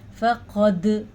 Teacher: قاف کو حروف مستعلیہ یعنی کہ پر حروف میں سے ہونے کی وجہ سے پر پڑا جائے گا، اور دال پہ قلقلہ ہوگا